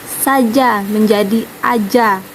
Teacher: Contohnya saja menjadi aja karena dia melakukan pelepasan pada huruf S di depan vokal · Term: pelepasan S